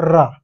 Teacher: जब मैं र का प्रयोग कर रहा हूं र तो जीभ क्या हो रही है कम प्रकंपित हो रही है मतलब जनरेशन जनरेट हो रही है है कि नहीं प्रकंपित हो रही है तो ये क्या हो जाएगा लुंटिन विंडम तो इसे क्या कहते हैं प्रकंपित व्यंजन भी कहते हैं।